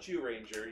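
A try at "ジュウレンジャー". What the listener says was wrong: It says Z on the buckle. It's Zyuranger.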